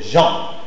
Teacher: C'est une consonne orale, fricative, prépalatale et sonore. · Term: le son je